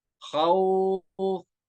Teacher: ऐसे ही नीचे मद लीन आरिज, हुर्फ लीन है, हुर्फ लीन के बाद यहाँ पे आरजी सुकून है, क्योंकि असली नहीं है, ये वक्त की वजह से साकिन होगा, खौफिन था, अभी हम नहीं खींचेंगे। जब हम वक्फ करेंगे तो ये बन जाएगा खौफ, अब हम खींच के पढ़ेंगे खौफ